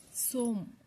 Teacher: ಸೋ ಅನುಸ್ವಾರಕ್ಕೆ ಇಲ್ಲಿ ಮ sound ಬಂದಿದೆ